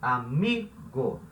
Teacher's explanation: É uma vogal átona, porque essa sílaba, aqui onde está o O, não é a sílaba tônica. A sílaba tônica é mi, amigo. Go não é a sílaba tônica.